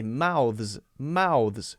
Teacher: Most people are going to say mouths, mouths. So instead of making an unvoiced S sound and an unvoiced TH sound, now we're going to make a voiced S sound as a Z and a voiced TH sound.